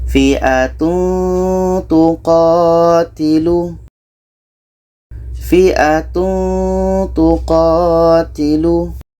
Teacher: Ketika kita menyebut tanwin, kita sudah merasakan huruf ta, sehingga ada bunyi eng di situ. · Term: ikhfa hakiki